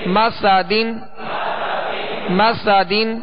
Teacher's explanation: اب سطر نمبر 7 میم زبر ما سین زبر سا مسا دال دو زیر دن مسا دن مسا دن. سین کو سختی کے ساتھ اس میں سیٹی کی آواز پیدا ہوگی اور دونوں زبر جو میم اور سین پر اس کی ادائیگی کے وقت آواز اور منہ دونوں کھولیں گے.